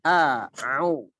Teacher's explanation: Huruf hamzah ya jangan sampai kita baca dengan ain karena makhrajnya ya huruf-huruf tenggorokan namun letaknya beda. Huruf hamzah di pangkal tenggorokan, huruf ain di tengah tenggorokan.